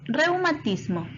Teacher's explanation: Observa bien las 2 vocales juntas. Está una vocal abierta y una vocal cerrada. La mayor fuerza de voz está en la vocal abierta. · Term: dictongo